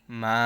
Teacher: এখানে 4 আলিফ টান দিতে হবে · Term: মদ্দে মুত্তাসিল